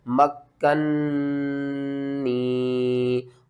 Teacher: مکنی، یا ساکن سے پہلے زیر ہے، حروف مدہ ہے، ایک الف کے برابر کھینچنا ہے اور یہاں پر نون مشدد ہے تو آپ نے غنہ بھی کرنا ہے